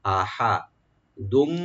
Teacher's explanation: হার উপর যেন সাকিনটা যেন না হয়, জবরটা যেন স্পষ্ট হয়